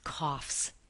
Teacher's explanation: have the sound of a final s and not a z this final sound is not not voiced it is not it is voiceless the vocal cords do not vibrate